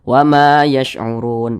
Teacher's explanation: Karena ini mat tabi'i, ini kan mat tabi'i tadi namanya, berjumpa dengan huruf yang disukunkan, maka ini menjadilah mat arid li sukun. Panjangnya ini boleh 2 harokat, boleh 4 harokat hingga 6 harokat panjangnya.